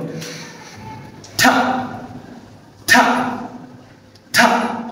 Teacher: জিহ্বার আগা দাঁতের মাড়ির মধ্যে 1 সেকেন্ড যাবত কি থাকবে আটকে বাতাস বন্ধ করবে তারপর 1 সেকেন্ড পরে বাতাসটা জড়বেগে বের করে দেবে